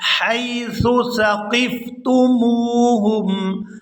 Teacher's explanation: سا کو بالکل نرمی کے ساتھ ادا کریں گے، یہاں سیٹی کی آواز یہاں پیدا نہیں ہونی چاہیے۔